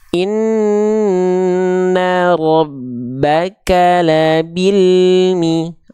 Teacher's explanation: kita bacanya tanpa memantul tanpa terputus suara dari huruf lamnya